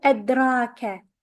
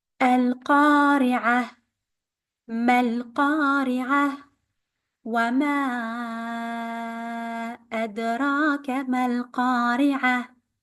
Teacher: we have to apply the qalqala, the echo sound on the del